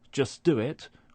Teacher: in the phrase just do it, where we don't pronounce the t at the end of just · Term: elision